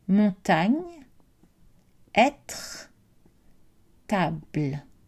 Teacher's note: ce n'est pas une voyelle complète c'est un son qui permet de finir l'articulation de la consonne donc écouter montagne être table je n'ai pas prononcé le final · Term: une petite voyelles